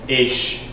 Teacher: This is more of an E-I, A sound.